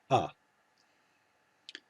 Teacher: historically it would have been more like an a sound but in modern pronunciation it's basically the same as kamats just shorter